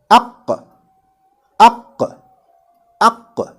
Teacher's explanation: the voice stops between the soft palate and the root of the tongue. That is the makhraj of this letter Qaf.